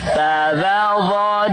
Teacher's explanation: di ujung lisan, nyentuh ujung gigi seri